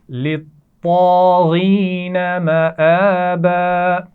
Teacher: طا بھی موٹا پڑھا جائے گا اور غین کو بھی موٹا پڑھیں گے. مآبا کھڑی زبر ہے حمزہ کے اوپر، تو اس کو واضح کر کے پڑھیں گے.